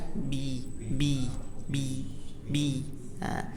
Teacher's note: Kita lanjut. B biasa, ba di dua bibir, ya. Nah, tanpa ada hembusan napas. Jadi tidak B.